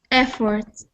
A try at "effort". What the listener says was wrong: So when you were reading it, I heard effort, a little bit. So just being careful with those R sounds, that they don't sound like a rolling R, that they always sound like that soft R sound. Effort.